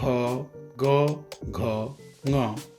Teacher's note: ग, घ, ङ वर्णों का उच्चारण कंठ से होता है।